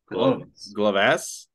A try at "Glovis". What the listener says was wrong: Like an I. Take the A out. Add an I.